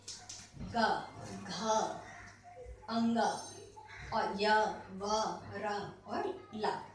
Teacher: वर्गों के जो तीसरे, चौथे और पांचवें वर्ण हैं, इनका उच्चारण करने पर एक गूंज होती है, जैसे ग, घ, अंग और य, व, र और ला। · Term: नाद